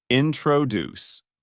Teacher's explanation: the word introduce is pronounced with a stress at the end, so it sounds like this: introduce.